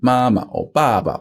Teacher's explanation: with many compound words I.E words with more than one character when you double it up the second one becomes a fifth tone the second syllable becomes a fifth tone